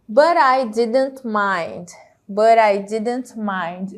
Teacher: o tezinho virando aqui com som de R né E se juntando com o i